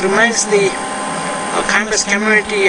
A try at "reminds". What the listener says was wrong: Reminds. You want to say reminds the campus community. So reminds. It sounded like you said remains.